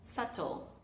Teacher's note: Fíjense que mis labios nunca se juntan